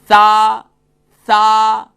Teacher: منہ اوپر کی جانب کھولے گا نا تو اس کی جو آواز ہے نا اس کے اندر تھوڑا سا بھاری پن پیدا ہو جائے گا اور موٹا تھوڑا سا ہو جائے گی.